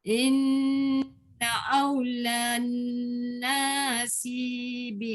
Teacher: Jangan panjang na, tak ada alif. Dengung pada na tak panjang.